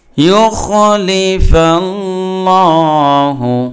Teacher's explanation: তার পূর্বে যেহেতু জবর রয়েছে এই জন্য আল্লাহ শব্দের লাম খরা জবর লা, এটা পুর হবে